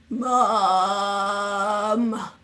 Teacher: allowing our voice to fry in the back of our throat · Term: vocal fry